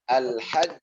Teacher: kalau ada tasdid ditahan dulu baru Qalqalah